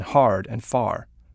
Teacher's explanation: There's even a fancy word to describe it, rhoticity, which is that solid R as in hard and far